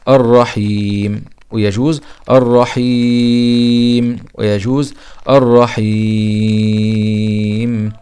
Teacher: مد عارض للسكون ويجوز ان يمد حركتين او اثنين او يجوز ان مد حركتين او اربع حركات او